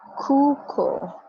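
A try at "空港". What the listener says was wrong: Yeah. Both of these are long. Kuko.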